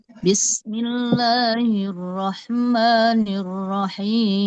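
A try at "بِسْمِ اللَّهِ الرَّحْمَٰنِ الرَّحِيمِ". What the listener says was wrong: Oke saya koreksi dikit ya bismillahirrahman maanya jangan ada tasdidnya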